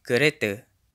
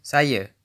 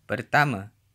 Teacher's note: Final a is usually pronounced as a schwa in Malay, at least in Malaysia.